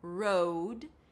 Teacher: round your lips, then it's the O as in go, road. And finish it up with a D.